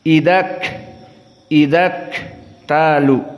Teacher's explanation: makhraj kaf dalam keadaan sukun dibaca dalam keadaan hams.